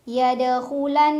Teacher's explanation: ada gunnah musyaddadah karena ada Nun yang bertasdid cara bacanya didengungkan ditahan kurang lebih dua harakat